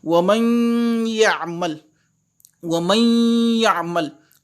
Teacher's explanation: Et c'est ça qu'on appelle Gunna. Cette Gunna là va remplacer la lettre Nun et je vais passer directement de la lettre Mim à la lettre Ya.